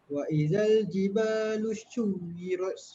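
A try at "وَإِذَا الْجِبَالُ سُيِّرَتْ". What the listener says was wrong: Okey, ni shui ke sui? Sin Ingat, tak ada titik, bunyi dia macam S. Kalau ada titik bunyi dia ada SY. Kalau tak ada titik bunyi apa? Bunyi S. Sin lah. Tak ada titik aku bunyi dia macam S.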